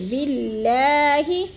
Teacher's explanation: تکفرو میں وہ مدہ ہے، اور باللہ کی اللہ باریک پڑھی جائے گی، اس لیے کہ اللہ سے پہلے لفظ با کے نیچے زیر آ گیا تو اللہ کو ہم نے باریک کر کے پڑھنا ہے